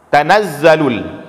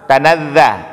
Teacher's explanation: Jumpa Kita dengan huruf dza tetap kita desis kan Pak ya jangan sampai dengan kita baca tanaza hanya begitu huruf